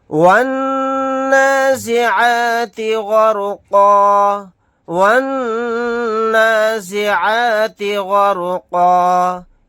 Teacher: یہاں پر نون کے اوپر تشدید ہے، یہاں پر غنہ کر کے پڑھیں گے۔